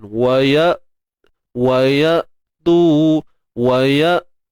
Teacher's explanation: Wa tattaqu wa ya'tukum. Untuk hamzah yang mati ni pastikan kita matikan tanpa ada sebarang bunyi tambahan. Wa ya'tu kan.